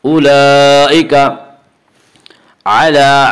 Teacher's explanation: مد متصل وہ مد جس میں حرف مد کے بعد حمزہ اسی لفظ میں آئے۔ اولئک علی، عین کا مخرج وسط حلق، اس کو واضح کر کے پڑھیں۔ علی لام کے اوپر کھڑا زبر ہے، کھڑا زبر برابر ہے الف مدہ کے، اس لیے کھڑا زبر کو ایک الف کے برابر کھینچ کر پڑھیں گے۔